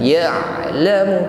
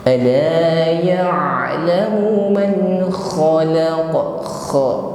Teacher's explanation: Ada suara yang mengalir pada huruf ain, tidak boleh tertahan.